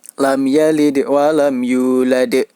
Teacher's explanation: Huruf dal, cara memantulkannya yaitu menyerupai huruf E. Lam yalid wa lam yulad. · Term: qalqalah kubra